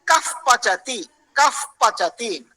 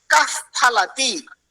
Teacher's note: उपध्मानीय मतलब विसर्ग ही होता है, लेकिन वो विसर्ग प और फा से आगे होता है, प और फा से आगे होता है, और उसको आधा ही उच्चारण करते हैं।